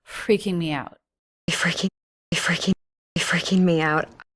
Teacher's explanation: Little extra H sound, little like laugh, but it's not a laugh, it's disbelief is what she is conveying in her voice.